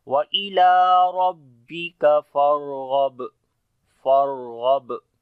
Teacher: غین کو بھی موٹا پڑھیں گے اور با کے اوپر قلقلہ کریں گے